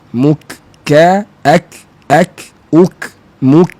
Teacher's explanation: Jangan muk ke dalam, dia jadi tebal.